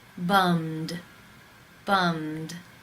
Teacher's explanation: the final sound in the infinitive is the m consonant sound it is voiced therefore it is case 2 and the ed is pronounced as the d